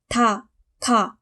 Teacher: 파열음은 구강의 어느 한 부분을 막았다가 터트리며 내는 소리